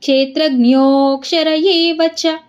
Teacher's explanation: ಇಲ್ಲಿ ಜ್ಞೋ ಮುಂದೆಗಡೆ ಪ್ಲುತ ಸ್ವರ ಇದೆ ಅದಕ್ಕೆ ಜ್ಞೋ ಅಂತ ಸ್ವಲ್ಪ ಎಳಿಬೇಕು